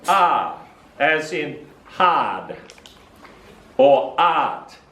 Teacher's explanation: “fathers are smart and fast” all have the longer /ãr/ vowel sound